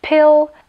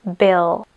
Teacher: zo začiatku sú pery spojené a náhlym vypustením vzduchu sa otvoria Presne tak ako keď prebieha explózia jediným rozdielom je že pri